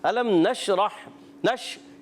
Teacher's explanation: शीन की अदायगी क्लियर करेंगे और मुंह में आवाज़ फैल जाती है। नशरह रा पुर रहेगा और हा की अदायगी क्लियर करेंगे।